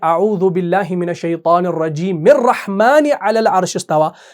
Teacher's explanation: آپ نے رجیم کی میم کو اگلے والے رحمان کے را سے ملا دیا